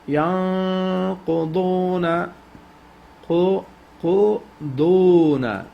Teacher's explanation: This is ikhfa noon is sakin, and you stretch it 3 second duration. Make sure you bring noon close to the makhraj of qaf.